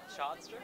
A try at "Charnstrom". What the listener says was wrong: Chanstrom. There's an R there, but it's not yet. It's